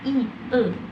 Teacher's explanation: vokal yang dihasilkan saat posisi lidah berada di bagian depan, yaitu i, e.